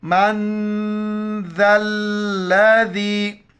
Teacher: ذا الذی، نون ساکن ہے، ناک میں آواز چھپائیں گے اور ذال کے وقت زبان باہر نکالیں گے